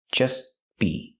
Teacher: We hear the T in just as a stop T between consonants, so you don't really hear it.